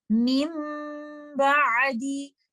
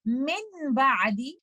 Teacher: Although you see letter noon written here, but in pronunciation, you will change letter noon completely into letter meme, and there will be no trace or no sound of letter noon. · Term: iqlab